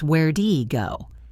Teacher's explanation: Where did he go? Becomes where'd he go. The where is very short.